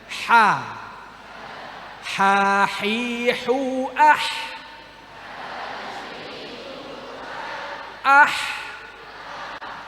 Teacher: ha itu di tengah tenggorokan